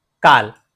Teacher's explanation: unique retroflex La sounds in Gujarati